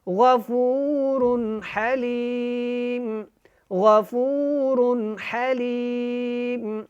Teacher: यहाँ पे इख्फा नहीं करेंगे, इजहार करेंगे, क्योंकि हरूफ हला की में से आपको हा नज़र आ रहा है, रून करके नहीं पढ़ेंगे।